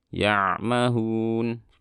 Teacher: Ditahan suaranya sedikit saat kita lafalkan ainnya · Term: ain sukun